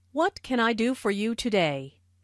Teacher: this question starts with what so the intonation drops at the end of the question